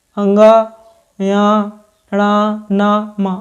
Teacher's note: इनको बोलते समय अपने नाक और मुह दोनों की सहायता होती है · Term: नासिक व्यंजन